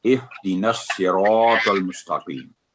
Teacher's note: را کو بھی پر کر کے پڑھیں گے اور طول کو بھی